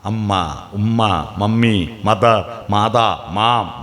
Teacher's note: കുട്ടി വായ പൂട്ടി തുറന്നിട്ട് ഒച്ച ഉണ്ടാക്കും. ചുണ്ട് പൂട്ടി തുറന്നാൽ കിട്ടുന്ന അക്ഷരാണ് ഉമ്മ